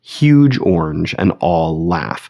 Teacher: Huge and orange are both stressed syllables. All and laugh are both stressed syllables. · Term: spondaic foot